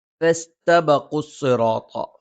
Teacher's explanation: ഫ മേലെ മുൻപല്ലിന്റെ താഴ്ഭാഗം താഴെ ചുണ്ടിന്റെ പള്ളയിൽ. സ നാവിന്റെ കൂർത്ത അറ്റത്തിന്റെ മുകൾ ഭാഗം 2 വരി മുൻപല്ലുകൾക്കിടയിൽ പിന്നിലായിട്ട് നിൽക്കുകയും നാവിന്റെ അറ്റം താഴെ മുൻപല്ലിന്റെ പള്ളയിൽ സ്പർശിക്കുകയും ചെയ്യുന്നു.